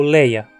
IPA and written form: leɪ̯ɐ (ensinamento)